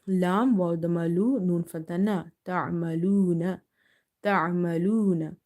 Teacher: Ain is from the middle of the throat, and before vav sakin you have dama, so you will give it a 1 equal to 1 alif stretch.